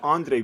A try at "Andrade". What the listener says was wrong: Andrade. Maybe the D didn't come out right.